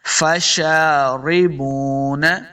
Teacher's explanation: واو کو جب پڑھیں گے دونوں ہونٹ گول ہوں گے تب واو کا مخرج صحیح ادا ہوگا